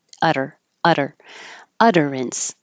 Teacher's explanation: the alveolar flap, because you're keeping your voicing on